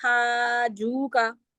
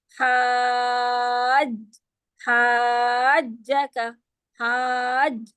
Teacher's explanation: ہا کو جیم سے ملائیے اور پھر جیم کی زبر پڑھیے، یعنی کہ جیم والا حرف جو ہے وہ 2 دفعہ پڑھا جائے گا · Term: شد